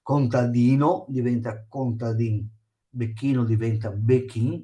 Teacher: contadino diventa contadin, becchino diventa becchin, perché noi veneti togliamo l'ultima lettera